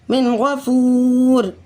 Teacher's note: میم نون زر من، غین زبر غو، من غو، فاو پی فو، من غفو، را دو زرین، من غفورن، من غفور۔ یہاں پر بھی بالکل غنہ نہیں کریں گے، بلکہ نون کو صرف ظاہر کریں گے، کیونکہ اس کے نون ساکن کے فوراً بعد غین آ رہا ہے۔ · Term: اظہار حلقی